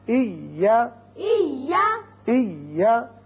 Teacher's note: یہ یا ساکن ہے پہلے، دوسرا متحرک ہے، لیکن جب ہم پڑھیں گے تو یہاں شدت کے ساتھ جب دونوں کو ملایا تو شدت پیدا ہوئی